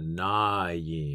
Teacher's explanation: you can almost imagine that there's a y after the Na